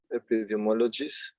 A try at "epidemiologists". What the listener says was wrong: And also you need the last TS. Epidemiologists.